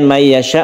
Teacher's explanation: may ini kita tahan dulu karena idgham biguna kita panjangkan. Yasha ini juga panjang sekali, mad wajib yang kita wakafkan.